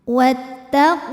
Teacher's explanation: sukun bertemu sukun tidak bisa dibaca sehingga sukun pertama dilepaskan wattaqulah lam pada lafaz Allah dibunyikan secara tafkhim karena huruf sebelumnya berbaris damah maka huruf lam ini kita tebalkan